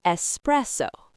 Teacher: it has three syllables and the stress is on the middle one.